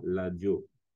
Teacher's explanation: lingala la lettre R se prononce généralement l donc on dira l'adio ainsi donc pour